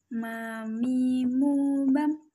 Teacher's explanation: Cara melafalkan huruf mim adalah dengan dikeluarkan dengan cara merapatkan bibir kita.